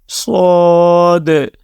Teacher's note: صاد قرآن کریم کے heavy letters میں شامل ہے، اس کو آپ نے موٹی آواز کے ساتھ پڑھنا ہے۔